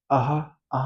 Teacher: आहा आहा बोलिए आप प्राण वायु बाहर आ रही है। तेजी से ज्यादा मात्रा में आ रही है। घोषत्व यानी ये अघोष है। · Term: महाप्राण